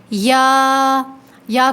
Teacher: یا کو 1 الف کے برابر کھینچیں گے 1 کاؤنٹ، اور یا کا مخرج ہے کہ جب زبان کا بیچ تالو کے بیچ سے ٹکرائے، ٹھیک ہے، زبان کا بیچ بالمقابل تالو سے ٹکرائے تو یا ادا ہوتا ہے